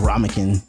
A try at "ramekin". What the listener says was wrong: it's ramekin. You said ramekin, like ramen noodles for your kin.